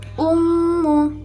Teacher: bacaan gunnah musyaddadah karena mim yang bertasydid